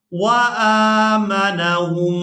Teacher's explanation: میم مشدد پر غنہ کرنا ہے, آواز ناک میں جائے گی اور اس آواز کو کچھ دیر ناک میں روک کر رکھیں گے